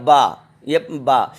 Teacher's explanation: با پڑھنے میں دونوں ہمارے لپ جو ہیں، دونوں ہونٹ آپس میں مس جائیں گے